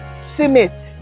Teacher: Not SM, but SIM. And the H is gone.